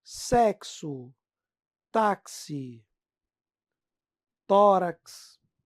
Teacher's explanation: dífono é o x com som de KS